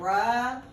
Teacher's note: If you say ruh, you're actually putting a vowel behind it. So make sure you're just making the sound, because you'll cause yourself problems when you're trying to write words.